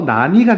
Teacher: 날과 니가 만나서 나니가 된다. 이거 리을이 탈락한 거. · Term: 리을 탈락